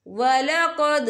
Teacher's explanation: یہاں دال ساکن ہے تو یہاں پر کلکلہ ہوگا۔